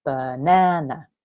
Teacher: So 3 syllables, and the second one is stressed. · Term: stress pattern